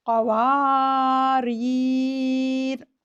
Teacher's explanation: آیت نمبر 17 میں وصل میں قواری را کا الف نہیں پڑھا جائے گا، اور وقف میں الف زائد نہیں پڑھیں گے، اور را بھی ساکن ہو جائے گی